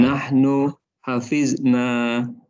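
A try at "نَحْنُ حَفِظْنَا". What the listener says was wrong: Masya Allah. Ahsanta.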